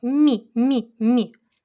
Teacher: це губний значить напівпом'якшений